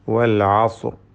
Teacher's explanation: വരുന്നു. ഇവ രണ്ടിനെയും ഹറക്കത്ത് പോലെ ശബ്ദം ചലിപ്പിക്കാതെ ഉച്ചരിക്കുകയും തഫ്ഹീം ചെയ്യുകയും വേണ്ടതുണ്ട് സ്വാദ് ഇസ്തിഹലാിന്റെ ഹർഫുകളിൽ പെട്ട തഫ്ഹീം ചെയ്ത് പെരുപ്പിച്ച് ഉച്ചരിക്കേണ്ട അക്ഷരമാണ് · സ്വാദ് ഇസ്തിഅലാഇൻ്റെ ഹർഫുകളിൽപ്പെട്ട തഫ്ഖീം ചെയ്ത് പെരുപ്പിച്ച് ഉച്ചരിക്കേണ്ട അക്ഷരമാണ്.